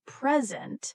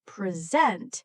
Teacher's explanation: If we stress the first part present, it means a gift. But if we stress the second part present, it means to give a talk.